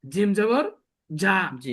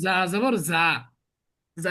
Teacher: এই জায়ের উচ্চারণ আর জিমের উচ্চারণ গুলায় ফেলে। এই জিমের উচ্চারণ হচ্ছে বাংলাতে বর্গীয় জ, অর্থাৎ আপনি খুব শক্ত করে উচ্চারণ করতে হবে